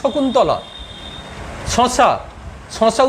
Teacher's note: শশা উচ্চারণ করতে জিভটা তালুতেই লাগছে। শকুন্তলা উচ্চারণ করো, শকুন্তলা উচ্চারণ করতে জিভটা তালুতে লাগছে। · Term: তালবস্য